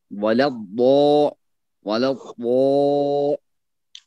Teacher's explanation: یہاں پہ ضاد جو ہے موٹا اور اونچا ہوگا